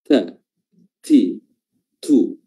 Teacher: Kalau dia berharokat seperti fathah, dhammah atau kasrah, maka hamsnya bersamaan dengan suara huruf ta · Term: sifat hams